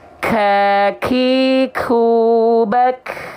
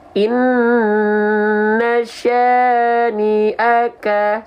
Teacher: Jangan sampai aka, jangan berlebihan karena dia bukan mengalir nafas. Ya, pengkhususan untuk huruf kaf dan ta itu nafasnya hanya berupa hamsnya hanya berupa percikan, bukan mengalir.